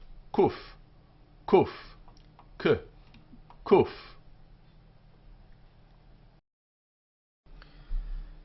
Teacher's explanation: this is a k sound but it's slightly further back in the throat